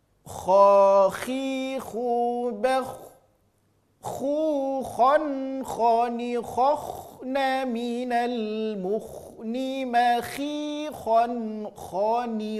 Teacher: Hurufnya keluar dari ujung tenggorokan. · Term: huruf kha